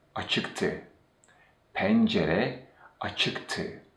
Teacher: the verb stem e drops and de turns into te, and this is because of the consonant mutation